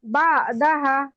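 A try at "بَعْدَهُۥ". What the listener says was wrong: বা হা লেখা, হাতে কি জবর? উল্টো পেশ। এটা মাদার হরকত না, খাড়া জবর খাড়া জবর উল্টা পেশ হলে একালিফ থেকে পড়তে হয়। হাদিসিম বাদাহু। বাদাহু।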